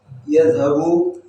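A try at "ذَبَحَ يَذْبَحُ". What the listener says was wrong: Bukan yadhabu. Yadhabu. Beda. Pergi kalau itu. Ya, bukan dhahaba. Dhabaha. Jangan dibalik. Kalau dibalik artinya pergi.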